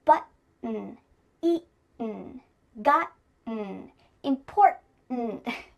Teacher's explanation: my throat is doing some important work here to make that glottal T sound exactly the way it should.